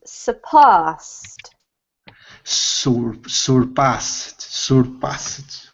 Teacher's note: So the emphasis is on the past, and then this is a T sounding ending